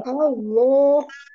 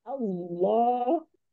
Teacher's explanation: pangkal lidah yang naik, kemudian ujung lidahnya di makhraj lam. Jadi kalau lam itu memang pada ada kalimat Allah itu tafhim.